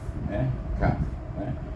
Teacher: Ingat, pangkal lidah membetuli langit-langit, depan sedikit iaitu huruf qaf, dan depan sedikit daripada makhraj huruf qaf itu ialah makhraj huruf kaf